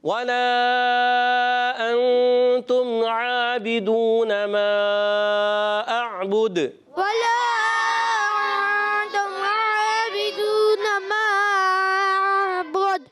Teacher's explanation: دونوں مدوں کو کھینچنا ہے, ولا کی مد کو بھی